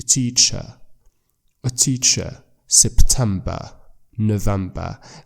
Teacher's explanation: we don't pronounce the r when it's in the end · We don't pronounce the R at the end. It rather appears like sort of schwa sound